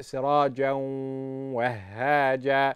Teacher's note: we join the Tanween to the Waw and we apply Ghunna. So we read it, Sirajan Wahaja.